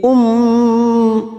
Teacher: mim yang bertasdid gunna musadadah kita dengungkan dan ditahan selama tiga harakat